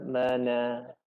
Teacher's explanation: Dia nampak macam tak ada gunah. Ada gunah di hidung tapi sangat sedikit.